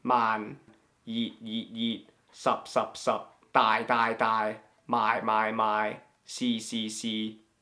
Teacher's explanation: Alright, so now the last of the flat tones is the 6th tone. It's the low and flat one.